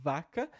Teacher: Enquanto que nós dizemos, por exemplo, vaca, com V, lábio dental